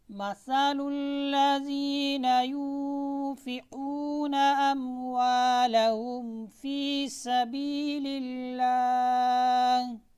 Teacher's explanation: ज़ुबान की नोक सनाया सुफलिया के किनारे और सनाया उलिया के साथ लग कर, सनाया उलिया यानी सामने वाले जो दो दांत हैं उसके ऊपर लग कर लफ्ज़ सीन, हरफ सीन अदा होता है और सीन में सीटी भी बजती है।